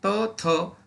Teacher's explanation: आपल्या जिभेचे टोक वरच्या दातांच्या मागच्या बाजूस टेकते त्यांना दंत्य असे म्हणतात